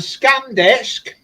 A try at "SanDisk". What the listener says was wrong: SanDisk, not scan. It's a SanDisk.